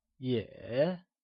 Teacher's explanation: yě carries the falling rising tone